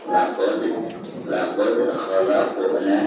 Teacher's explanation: Di sini ada huruf dal sukun sekaligus posisinya ada di tengah-tengah bacaan. Maka dihukumi qalqalah sughra dan dibacanya itu harus dipantulkan dengan suara pantulan yang tipis ya.